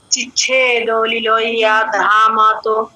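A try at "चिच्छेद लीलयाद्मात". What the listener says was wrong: আচ্ছা একটু একটু দিদি, চিচ্ছেদ লীলয়া ধামাত নয়, লীলয়াদ মাত, ধ হাফ ম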